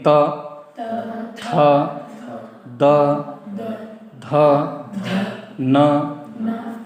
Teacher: उनका उच्चारण जिवा के अग्र भाग से दांतों को स्पर्श करके करना चाहिए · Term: दंत वर्ण